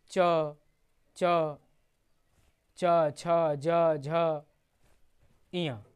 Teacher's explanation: चवर्ग की अगर हम बात करें तो चवर्ग का उच्चारण स्थान जो है तालु है।